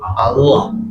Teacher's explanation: Ujungnya saja L. Tapi kalau lafzul jalalah tulangnya 3 jadi dilebarkan, lidahnya dilebarkan menyentuh area belakang gigi.